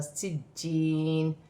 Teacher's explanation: یہاں پر یا مدہ بھی ہے اور جیم مشدد ہے، جماؤ کے ساتھ سختی کے ساتھ پڑھا جائے گا